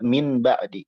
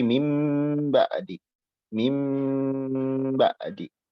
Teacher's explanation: Iklab itu artinya merubah. Merubah nun menjadi mim. Merubah secara bunyi, ya, bukan secara huruf. Hurufnya tetap nun tapi bunyinya jadi mim.